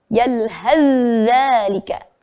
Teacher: jangan lupa menampakkan sifatnya zal yang rokhawah, bunyi berjalan. Maka ketika ditasydid, maka membacanya meleburkan seperti ditasydid ya.